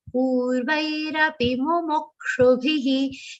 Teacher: Pu is a long sound followed by half ra and vai.